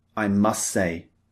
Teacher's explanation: We don't usually, in spoken English, pronounce the T at the end of must.